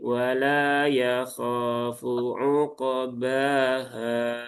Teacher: Satu ayat ini biasanya di ayat manapun masih banyak sahabat-sahabat kita yang membaca ketika di akhir ayat itu dipelankan ritmenya dan paling akhir menjadi panjang